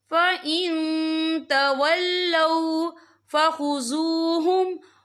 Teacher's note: تنوین کی آواز کو ناک میں چھپائیں گے